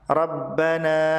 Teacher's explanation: rabbana dibaca panjang 4 atau 5 harokat disebut sebagai mad jaiz munfasil karena mad tabi'i bertemu dengan hamzah di lain kata.